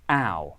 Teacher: in contemporary british english the vowel starts more front in the mouth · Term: mouth vowel